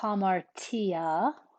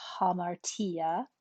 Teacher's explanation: a rough breathing indicates that the word starts with an h sound it's aspirated